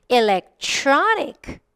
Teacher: TR 발음이 붙어있는 부분에서는 오히려 치읓처럼 발음하는 것이 좀 더 자연스러워요